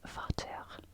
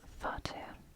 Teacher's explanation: and that is an F sound in modern German